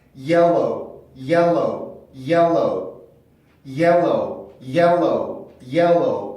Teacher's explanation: 마치 여기 L 발음이 하나가 더 있는 것처럼 발음을 해주고 있죠. · 그러니까 내 혀가 접히지 않게 오므라들어서 이빨을 뽑아낼 만큼 강하게 힘을 주고 있기 때문에 L 발음은 되게 묵직하고 두꺼운 소리예요. 그래서 L 발음이 L 발음이 나왔을 때는 자기 힘을 주체를 못해서 앞뒤로 다 영향을 미치게 됩니다.